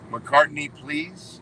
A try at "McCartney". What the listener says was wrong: You're saying McCarthy instead of McCartney.